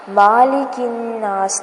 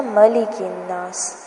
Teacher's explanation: یہاں پر دھیان رکھنا ہے کہ میم کو لمبا نہیں کرنا، مالک الناس نہیں پڑھنا، ملک الناس.